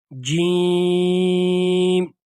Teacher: اور اس کی ادائیگی کا طریقہ یہ ہے، یعنی اس کا مخرج، یعنی جہاں سے یہ حرف نکلتا ہے وہ یہ ہے کہ جب زبان کا درمیانی حصہ منہ کے اوپر والے حصے کے ساتھ لگ جائے تو وہاں سے جیم ادا ہوتا ہے